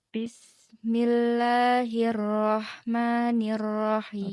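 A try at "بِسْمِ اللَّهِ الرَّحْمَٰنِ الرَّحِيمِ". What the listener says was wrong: Oke, haknya ya Kak ya. Oke, masih PR ada hak. Karena hak itu adalah di hirroh, tidak ada ya gini.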